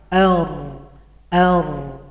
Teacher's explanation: getaran saja ar ar ar tapi dia harus sepaket dengan inhiraf setelah getar gerakannya dari depan ke arah belakang ar ar Jadi huruf ro antara takrir dan inhiraf ini satu